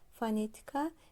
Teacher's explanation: fonetika sözündə düşür ikinci hecayə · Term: vurğu